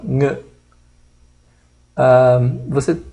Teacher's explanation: Ng, que é uma velar e nasal, Ng. Esse Ng é da palavra thing, coisa.